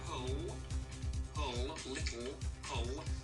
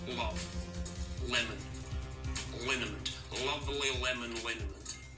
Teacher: Really dark L right at the back. So say pull, little, pull, and that L is the L we're going to use for all our words.